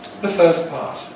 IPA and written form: ðə ˈfɜːs ˈpɑːt (the first part)